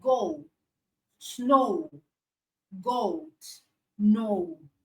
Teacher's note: Then we have sound O, which is a combination of schwa sound and short oo sound. Schwa sound and short oo sound.